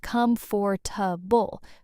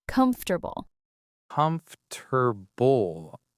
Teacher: A lot of learners say com-for-ta-ble, four syllables. But the correct pronunciation is actually comf-ter-ble, three syllables.